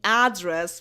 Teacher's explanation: people stopped saying address with this accent with the stress on the first syllable